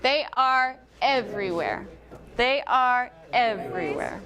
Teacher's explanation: bring it up on every and then down